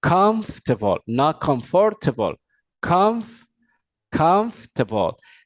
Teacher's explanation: la o r es completamente muda